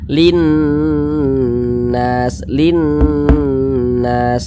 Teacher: Sebelum nun bertasydid ada huruf yang memiliki tanda baca kasroh, berarti nun bertasydidnya ini hukumnya gunnah musyaddadah. Cara membacanya digunnahkan itu didengungkan. Jadi suaranya itu kita tahan, kita panjangkan sejenak. Linnas, linnas.